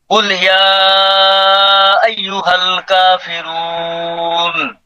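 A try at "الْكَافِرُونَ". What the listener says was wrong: এখানে কিন্তু এক আলিফ আছে, কাফিরুন।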